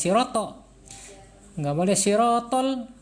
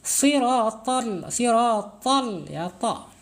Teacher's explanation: Kalau sirotol berarti pakai ta, harus tebal, lidahnya harus terangkat. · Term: huruf tebal